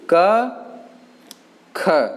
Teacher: का में कम समय लगा है, खा में ज़्यादा समय लग रहा है